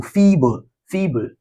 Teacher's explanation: We usually have the stress syllable in the first.